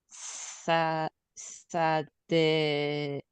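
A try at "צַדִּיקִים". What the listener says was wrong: That's a final mem. Tzadikim.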